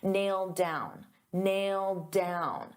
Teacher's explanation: because I have a d sound on down and these two go together, I'll pronounce it as one. And you'll only hear one d sound.